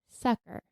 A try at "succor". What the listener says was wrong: See, I think I would pronounce that, and I'm not certain of this, Succor, or like a bit more emphasis on like a OR sound at the end. Because it has an OR at the end, right? Succor.